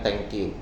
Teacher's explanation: T-nya menjadi tidak nempel ke gigi atas, thank. Akhirnya menjadi mundur, menjadi bunyi alveolar. Dan the-nya itu di the ya, Pak.